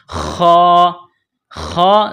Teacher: خا کو موٹا کرنا ہے، جس طرح انسان گلے سے بلغم نکالتا ہے اسی طرح خا کو نکالیں گے